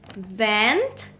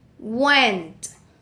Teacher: the sound is labiodental fricative and voiced